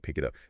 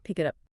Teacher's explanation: Sounds like pick it up. The K sound links to the I. The T links to the U.